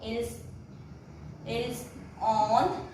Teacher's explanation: Again S is pronounced because it is followed by a vowel.